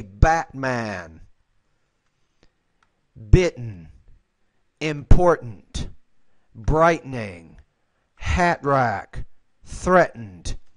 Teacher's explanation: This is a sound, you're pronouncing it more with British English, and that's okay, but I just want to point out to you, the T, when the T's in the middle of the word, we refer to this in linguistics as a glottal stop. It means that we don't really pronounce it.